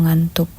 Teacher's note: bunyi nasal ini dihasilkan dengan cara menutup rapat arus udara di rongga mulut dan menyalurkannya keluar melalui rongga hidung